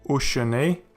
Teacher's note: A shurek is a long U sound, so it is a long vowel. And this means of course that the Shewa is pronounced.